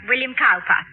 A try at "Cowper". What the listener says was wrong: Cooper, darling. It is spelled Cowper, but pronounced Cooper.